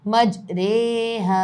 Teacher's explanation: رے کا ساؤنڈ آتا ہے، اس میں ری نہیں پڑھا جاتا، یہ صرف ایک ہی جگہ ہوتا ہے قرآن پاک میں، اس کو کہیں گے امالہ والی روا۔